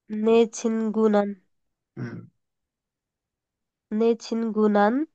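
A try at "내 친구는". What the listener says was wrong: नौ का साउंड नहीं आना चाहिए, छिंगू छिंगू गु। हाँ छिंगू।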